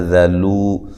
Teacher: ذال کو نرم ادا کرنا ہے، باریک ادا کرنا ہے